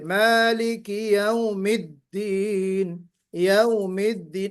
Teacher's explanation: दाल की एक सिफत है जहर, यानी आवाज बुलंद हो